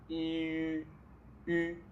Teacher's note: We just pronounce I as in tree, I. Just round your lips.